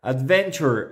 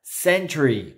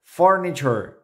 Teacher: la combinación tu se va a pronunciar como una ch